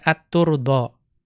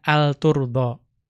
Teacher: At-turda itu boleh dibaca dengan mengidghamkan al kepada ta menjadi at-turda.